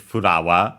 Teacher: And then, of course, in its full name for regular piranha plants, we would have Furawa, flower from English. The accent of that would be, yeah, like in English, Furawa on the ra.